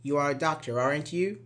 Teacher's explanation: we use a rising intonation when we are using tag question to ask a question